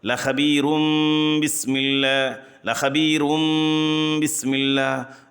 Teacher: را کو باریک کرتے ہوئے یہاں پر اقلاب کریں گے